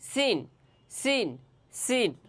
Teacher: জিহ্বার আগা, সামনের নিচের দুই দাঁতের আগা এবং সামান্য মধ্যখান থেকে লাগিয়ে উচ্চারণ করতে হবে